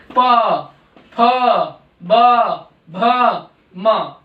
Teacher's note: फिर हमारा आता है प वर्ग जो कि ओष्ठ्य है। इसमें हमारे दोनों होठ आपस में मिलते हैं तो ये ध्वनि निकलती है।